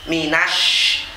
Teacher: shinnya ini harus tafashi, harus ngowosh, nafasnya banyak. Minash, jangan seperti sin kecil ya, kurang banyak nafasnya. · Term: sin besar